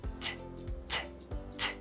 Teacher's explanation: when I say t, my tongue touches my teeth, and I breathe out.